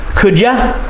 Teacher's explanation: the way that we say it in the reduced forms could many times we change you to yah when we say it